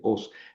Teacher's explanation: no forma diptongo porque son dos vocales fuertes · El acento se pinta sobre la omicron y se pronuncia sobre la omicron porque no es diptongo. Entonces, es una palabra oxítona.